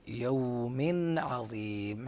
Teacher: عذاب يوم عظيم، حيث نلاحظ أن التنوين وقع قبل حرف العين، فينبغي إظهار نون التنوين قبل العين يوم عظيم، هكذا يوم عظيم بسكون نون التنوين